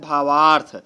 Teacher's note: तो भावार्थ में आप देख रहे हैं, भाव में व में अ आ रहा है और अर्थ में पहला वर्ण अ है, तो इसका अंतिम अ और अर्थ का भी अ मिल करके ये दोनों वर्ण बन जाते हैं आ